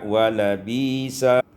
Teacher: ibdalul hamzati ya'an ditukar hamzah itu dengan ya sehingga kita baca wala bisa.